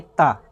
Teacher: अगर ता, था, दा इन सभी वर्णों को उच्चारण करेंगे तो आपकी जिह्वा किससे जाके टकरा देगी, देखिए बोल के देखिए, ता, दांत से टकरा रही है